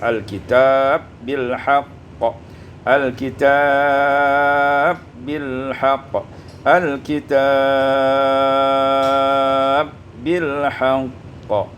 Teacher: idghamul ba fil ba, diidghamkan ba pada ba menjadi al-kitab bil haqq, al-kitab bil haqq, al-kitab bil haqq.